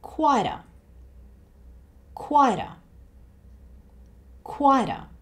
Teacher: And again, like I mentioned earlier, we have a T followed by the schwa sound. So the T sound here changes to somewhere between a D and a T.